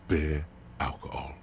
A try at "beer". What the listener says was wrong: Guess that didn't sound like beer. It sounded like bear.